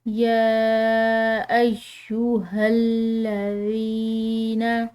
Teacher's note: ذال بالکل نرم حروف میں سے ہے، اس کو ادا کرتے ہوئے کسی قسم کی سیٹی کی آواز نہیں ہونی چاہیے، نرمی سے ادا کرنا ہے۔